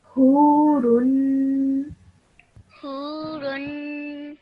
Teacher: tanween should have the nasal sound, the gunna sound in your nose for 2 seconds at the end